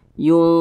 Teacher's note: didengungkan suaranya kita tahan kita panjangkan dua harakat atau kira-kira dua katukan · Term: ikhfa Hakiki ausat